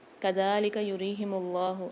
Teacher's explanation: اللہ کے لام کو موٹا پڑھیں گے کیونکہ اس سے پہلے پیش آ رہی ہے